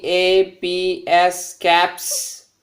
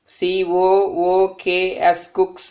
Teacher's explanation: When a voiceless consonant takes the plural form s or es, should be produced sa.